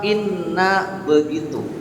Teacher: Inna ada Nun tasdid aturannya tidak boleh tergesa-gesa namanya ghunnah · Nun tasdid mesti gunah minimal atau kadarnya tiga